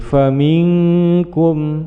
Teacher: bacaan ikhfa mendengung samar menuju pada huruf kaf, maka menjadi bacaan ikhfa ab'ad.